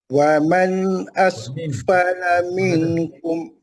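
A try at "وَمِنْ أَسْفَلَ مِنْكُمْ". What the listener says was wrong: Wamin bukan waman tu.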